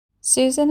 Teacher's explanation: susan is spelt with an s in the middle position but sounds like the z sound